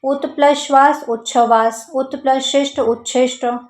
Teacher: जब पहले शब्द के अंत में त हो दूसरे शब्द के प्रारंभ में श हो तो ये जो त है वो च में और श छ में बदल जाता है।